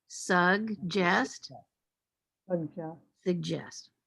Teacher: And where's the stress? Second syllable. The second syllable.